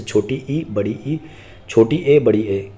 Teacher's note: अग्रस्वर जो जीव के अगले हिस्से से बोले जाते हैं